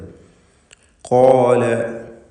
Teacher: ഇസ്തിഅലാഇൻ്റെ 7 അക്ഷരങ്ങളിൽ പ്രധാനപ്പെട്ടതാണ് ഖാഫ്. ഷിദ്ദത്തുള്ള അക്ഷരമാണ്. അതുപോലെ ഖുവ്വത്തിൻ്റെ പല സിഫത്തുകളും അതിലുണ്ട്.